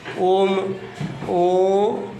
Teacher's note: जब हम ओम बोलते हैं तो इसमें सिर्फ ओ ही सुनाई देता है